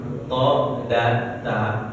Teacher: To, da, ta, yaitu ujung lidah bertemu dengan pangkal gigi seri atas.